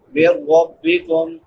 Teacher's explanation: من ربکم نون ساکن کے بعد حروف یرملون میں سے را ہے تو ادغام بلا غنہ ہوگا